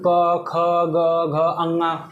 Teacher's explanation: कंठ से क होता है ख होता है ग होता है घ होता है अंगा होता है